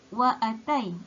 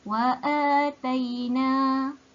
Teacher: Adanya hamzah selepas alif. Harkatnya adalah 2 harkat. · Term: mad badal